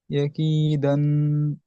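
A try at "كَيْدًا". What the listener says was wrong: একই দান হবে না, একই দা হবে। এখানে আয়াতের শেষে দু আলিফ, দু জাবার এসেছে, এক জাবারকে বাদ দিয়ে এক আলিফ পরিমাণ টান দিয়ে দাঁড়াতে হয়।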